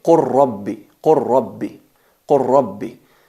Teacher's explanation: La lam la fusionamos en la ra porque son mutaqaribain, son similares, son cercanos. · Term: idgham al-mutaqaribain